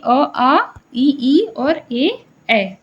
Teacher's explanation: जब भी हम इसका उच्चारण करते हैं तो हमारे होठ वृत्त मुखी नहीं होते हैं